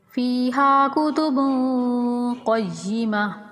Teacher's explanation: قاف کو موٹا یعنی پر کر کے پڑھیں گے۔